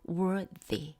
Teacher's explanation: 지금 th의 발음이 father 할 때 그 유성음입니다.